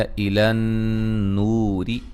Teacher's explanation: یہاں نون مشدد پہ غنہ ضروری ہے